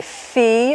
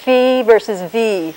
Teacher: So we put these parts together, but the sound keeps coming out, so we get a f. There's another sound made with the same teeth and the same lip in the same position, but with the vocal folds vibrating, and that's called a V.